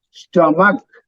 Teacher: Sto is pronounced softly. Ma is stress, and stomach, K is again soft. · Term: syllable stress